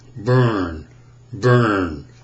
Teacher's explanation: I've got tongue root tension I've got lip rounding and I've got center of the tongue bunching and tensing